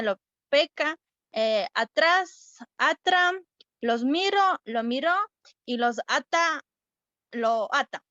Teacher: Ya, las diferencias fonológicas y fonéticas, tenemos la aspiración de la S, que esto es la existencia e intensidad de la aspiración y pérdida de S al final de la sílaba y de la palabra